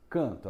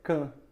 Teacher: Esse N aí está aí só para nasalizar. A letra A e a letra N tem um som só, o só de an, o A nasal.